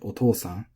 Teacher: the accent the pitch is lining up with the long syllable so it sounds very natural to us